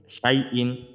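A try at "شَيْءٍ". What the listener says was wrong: ইকফা গুন্না করতে হবে না?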